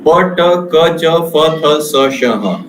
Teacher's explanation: this is the position of the voiceless consonant. The glottis are held apart. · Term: voiceless consonants